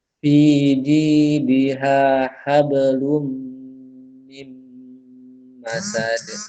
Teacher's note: Wamra'atuhu hammalatal hatab fi jidiha hablum min masad. Mim masad, mim tasydid jangan lupa ditahan. Agak lama tahannya.